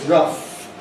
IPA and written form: rʌf (rough)